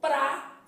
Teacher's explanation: P fechei a boca r vibrei a língua pra e o a que é abrir a boca então pra